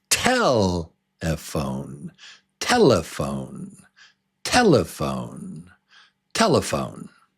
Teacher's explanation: Did you say 3 beats and the strong syllable is number 1? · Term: strongest syllable